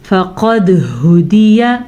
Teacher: قاف کو موٹا پڑھنا ہے, دال پہ کلکلا کرنا ہے